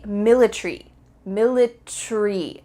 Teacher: In British English, they often cut out the A.